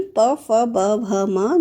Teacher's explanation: ओष्ठ व्यंजन जो ओठों से बोले जाएं, जिसमें ओठ जो है एक दूसरे से टच होते हैं, उसे ओष्ठ व्यंजन कहते हैं।